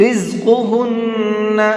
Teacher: زا کو سختی کے ساتھ میں پڑھیں گے اور قاف کو منہ بھر کے پڑھیں گے، اور اس نون کے اندر بھی غنہ کریں گے۔